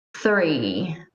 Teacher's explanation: for the first sound you bring your tongue between your teeth